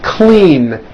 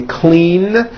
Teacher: Clean ends with a voiced N.